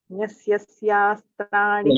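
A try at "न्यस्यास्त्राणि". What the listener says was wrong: You're adding an extra ya. Nyasyastrani.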